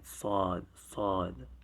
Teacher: I've written it with an AW instead of an AA. So now the Saad is like the Seen, is like the S, English S, but you open wide.